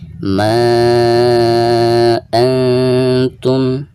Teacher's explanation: Nun sukun lalu berhadapan dengan salah satu huruf ikhfa, di sini huruf ta. Maka cara membaca nun sukun tersebut itu harus disamarkan disertai dengan dengung